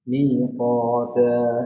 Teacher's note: Minya panjang, qafnya panjang, ta-nya juga 2 harakat. Semuanya 2.